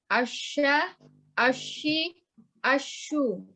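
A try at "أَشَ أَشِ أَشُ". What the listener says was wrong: Asya. Bibirnya jangan ikut-ikutan. Asya, ashi, ashu. Kecuali doma.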